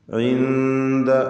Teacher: സാക്കിനത്തായ നൂനും ശേഷം ദാലും വന്നത് ഇഖ്ഫാ ഹഖീഖി നൽകി അവ്യക്തമാക്കി മണിക്കണം.